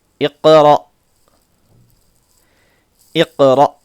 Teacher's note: حمزہ ساکن آ رہا، جو جھٹکا ہوتا ہے